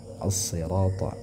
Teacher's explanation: Nah ini panjang 2 harakat, ini asyamsiyah namanya ya. As-sirata, al-nya tidak disebutkan, dihilangkan ya. Jadi yang coba adalah huruf sad-nya.